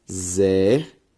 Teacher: A sílaba tônica, zer, ou seja, antepenúltima sílaba tônica, portanto, proparoxítona